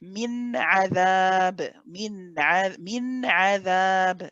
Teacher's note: reciting the noon separately and distinctly, and not merging or blending it in any way with the ayn. So we hold the noon for the tawassut, min adhab, min adhab. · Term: idhar halqi